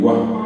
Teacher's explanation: Se dan cuenta que el acento está en la A, en la vocal fuerte, no está en la vocal débil. Si el acento hubiera caído en la débil, hubiera dicho gua, y es gua.